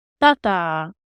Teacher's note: So the first syllable is stressed, and the second one is long, but it's unstressed.